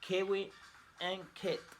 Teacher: The consonant k. Place of articulation velar. Manner of articulation stop or plosive. Voicing voiceless.